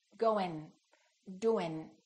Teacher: people think they don't have to pronounce the G and then they just produce the N before the G and they produce it in the front of their mouth